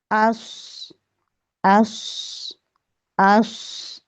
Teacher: इसकी आवाज मोटी होगी और सीटी वाली होगी